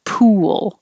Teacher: need a vowel you do need to round your lips so in the process of rounding your lips for the u and bringing them back for the l you're going to make a little w